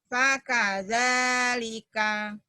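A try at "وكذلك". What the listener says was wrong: Wah bukan fa. Wakada. Wakadzalika.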